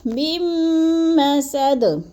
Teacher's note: میم مشدد کو پچھلی میم مشدد کے ساتھ ملانا ہے، درمیان والا نون ساکن نہیں پڑھا جائے گا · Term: ادغام بلا غنہ